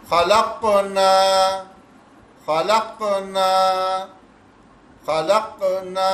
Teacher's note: لیکن اگر اسے قلقلہ کریں گے، قاف کو ساکن آیا ہے تو ہمیں کنڈیشن مل گئی، اب ہمیں قلقلہ کرنا ہے، ایکو ساؤنڈ بنانا ہے. تو اس کو تھوڑا سا ایکو بنا دیں گے.